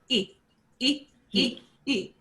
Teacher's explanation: it sounds like our English letter E, but it is shorter than E, like easy.